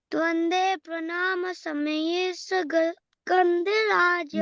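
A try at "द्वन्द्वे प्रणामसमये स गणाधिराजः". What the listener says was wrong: Gandhiraja nahi, not that. Ganadhiraja.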